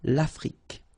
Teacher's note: L'Afrique, same thing here. Final it's only the k at the end that you will hear